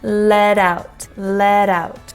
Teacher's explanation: First is let out. Again, flap T combined into out